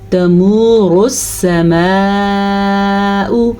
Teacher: اس را کو پر پڑھنا ہے کیونکہ را کے اوپر پیش ہے